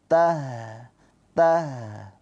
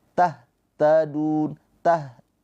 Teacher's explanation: Ha ini mempunyai sifat rakhah. Apa itu rakhawah? Rakhaah itu mengalir suaranya. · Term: rokhwah